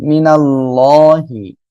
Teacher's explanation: এরপরে আল্লাহ শব্দে লামের ডাইনে জবর মোটা করে পড়বো